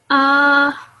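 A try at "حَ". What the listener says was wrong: Again, this should come from the throat. So in the middle of your throat, this should come. So it should be ah.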